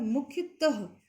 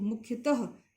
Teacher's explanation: ये जो विसर्ग है इसका उच्चारण हल्के ह के रूप में होता है